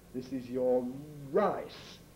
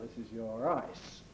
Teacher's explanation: the syllable initial R tends to be made more strongly than the syllable final one. With me, it's very obvious visually, because I have the habit, as many people do, of lip-rounding initial R.